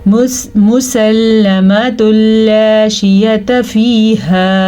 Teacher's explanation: तनवीन को लाम के साथ मिला देते हैं, इन दोनों को आपस में मिला देते हैं, लेकिन गुन्ने को निकाल देते हैं। ता दो पेश लाम तुल, नून ख़त्म हो गया। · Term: इदगाम बिला गुन्ना